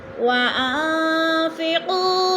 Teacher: وَأَنفِقُوا مِمَّا رَزَقْنَاكُمْ، وَأَن پہ اخفا ہو رہا ہے، نون ساکن کے بعد فا آ گیا تو اخفا، آواز کو ناک میں چھپا کر پڑھیں گے